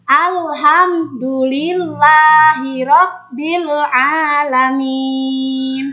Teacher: Cara membaca huruf idhar syafawi harus terang di bibir dengan mulut tertutup.